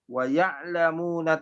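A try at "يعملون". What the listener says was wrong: Wa ya'malun, bukan wa ya'lamun ya. Wa ya'malun.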